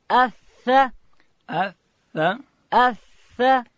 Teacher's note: ثا ادا کیږي د ژبې سر به د لوړې زامې د مخ دوه غاښو و سرو ته وروړو.